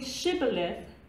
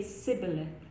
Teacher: They don't have the sh sound in their phonetic system. So instead of saying Shibboleth, they say Sibboleth.